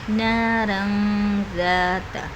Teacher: دال ہے تو یہاں پر اخفا کا قاعدہ ہو رہا ہے، تنوین کی آواز کو چھپا کے پڑھیں گے